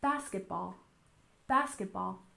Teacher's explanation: basketball has stressed on the first syllable as well